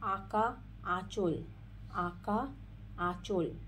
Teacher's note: যে স্বরধ্বনি উচ্চারণের সময় নাসিকার সাহায্যের সাহায্য ছাড়া বলা যায় না নাসিকার সাহায্য নিতেই হয় সেই সমস্ত স্বরধ্বনি কে বলা হয় সানুনাসিক স্বর